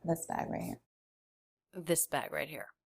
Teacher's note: really low in Pitch listen to the quality of her voice there's not much air in it